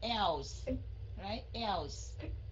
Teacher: Cái âm L đó mình phải cong lưỡi lên rồi mình mới đánh cái âm S ra.